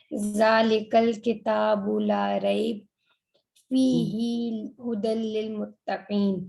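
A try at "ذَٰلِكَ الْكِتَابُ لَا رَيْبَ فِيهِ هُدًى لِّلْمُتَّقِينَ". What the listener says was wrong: अब यहाँ नहीं रुकना, फी ही हुदल लिल मुत्तकीन, यहाँ पे बिल्कुल नहीं, आप जब भी दो डॉट आएंगे ऐसा ही होगा, जहां आपको इजी लगता है वहां रुक जाएं, जहां मुश्किल लगता है उसको मिला के पढ़ना।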